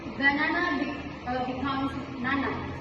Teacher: The first syllable is deleted to simplify the word. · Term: deletion